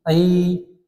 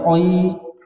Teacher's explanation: Wal ju'i, ai, langsung turunkan rahangnya. Ai, jangan oi, jangan ditebalkan.